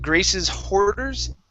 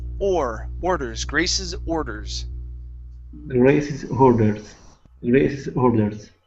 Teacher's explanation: go right to the vowel instead of an H sound